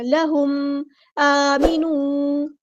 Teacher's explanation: میم ساکن پر اظہار شفوی ہوگا، یہاں پہ ٹائم نہیں دینا ، لہم ایسے نہیں پڑھنا، لہم آمینو، الف پر کھڑا زبر